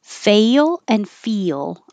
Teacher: fail and feel are part of a group of words where the first vowel ends with an e sound so your tongue is put in a very high position and then it comes down to make the L which means it has to slide